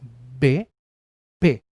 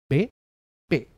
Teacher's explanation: Que sean bilabiales significa que los dos labios participan en su producción